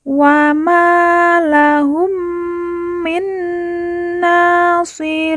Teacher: na ya dipanjangkan lagi dua harakat karena di atasnya terdapat Alif kecil · ada nun sukun bertemu dengan huruf nun yang bertasydid. Kita baca, ditekan, ditahan 2 harokat dan didengungkan. Kemudian na ya dipanjangkan lagi 2 harokat karena di atasnya terdapat alif kecil.